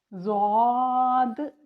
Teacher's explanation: جب ہم زبان کی سائڈ پیچھے اوپر والی دونوں سائڈ کی داڑیں، دائیں یا بائیں طرف کی داڑھ کو جب ہماری زبان کی سائڈ ٹکراتی ہے تو حرف ضاد کی ادائیگی ہوتی ہے۔ اس کی ادائیگی تھوڑی سی مشکل ہے، تو اس کے لیے آپ نے خاص پریکٹس کرنی ہے۔